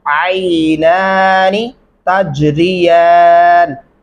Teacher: ये खड़ी जबर वाला नून लंबा करेंगे, जिसके नीचे जेर है इसको लंबा नहीं कर सकते।